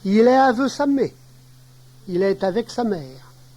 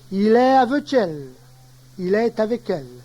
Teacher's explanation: Avec perd son que devant un mot commençant par une consonne